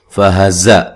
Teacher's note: زا کو زور سے ادا کرنا ہے اور سیٹی سے ادا کرنا ہے